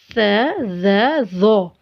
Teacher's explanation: जुबान की नोक को ऊपर के दांतों के किनारों से लगाएंगे तो स ज ज़ो, ये 3 हरूफ अदा होंगे। नरमी से पढ़े जाते हैं ये तीनों हरूफ।